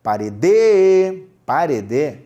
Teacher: vamos forçar a última sílaba da palavra parede